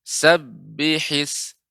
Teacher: ketika membaca sab ya, jangan terasa seperti agak panjang Ibu. Ketika mengucapkan sabbihis seharusnya langsung sabbihis ya, tidak sabbihis.